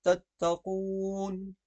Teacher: تتقون واو ساکن سے پہلے پیش ہے تو یہاں پر واو جو ہے کھینچا جائے گا